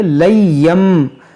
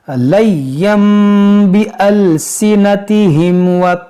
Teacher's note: लय्यम गुन्ना करेंगे, यानी इक़लाब का कायदा यहाँ पर लगेगा